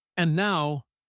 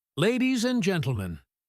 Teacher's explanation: She starts low and slow. And now, then she speeds up and gets louder. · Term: building rhythm